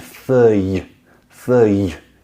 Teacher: just this y on the end, feuille, feuille. You hear, I push out a little bit of air